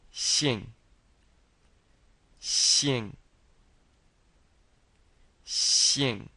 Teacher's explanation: And again, this xi sounds like xi, and you're smiling when you're pronouncing the e. So it's kind of like saying the word sheep, smiling, sheep, but instead of a p on the end, it's an ng on the end.